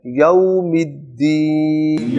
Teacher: یوم الدین نہیں پڑھنا یعنی ڈھیلی زبان سے، بلکہ لین کی آواز کو کلیئر کرنا ہے